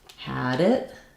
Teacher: So D and T, when they link to a vowel, get flapped.